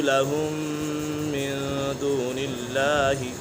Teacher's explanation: میم ساکن کے بعد دوسری میم آ جائے میم ساکن میں ادغام شفوی ہوگا، یعنی گناہ کر کے پڑھیں گے۔